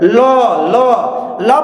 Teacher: जीभ कर्व लेगी और किनारे भाग से क्या निकलेगा? वायु निकलेगा। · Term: पार्श्विक ध्वनि